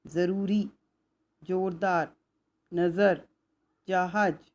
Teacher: ज ये उर्दू भाषा का वर्ण है और इसका उच्चारण करते समय जीभ ऊपर वाले दांतों से थोड़ा सा हल्का सा चूती है और हल्की सी सीटी सुनाई देती है